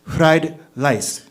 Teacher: when Japanese people try English, they can't pronounce the R sound, right? It turns into like a bit of an L.